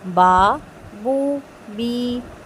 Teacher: اس کو بہت کھینچنا نہیں ہے کہ با بو بی، اتنا نہیں، ٹھیک ہے، صرف 2 کاؤنٹس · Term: حروف مدہ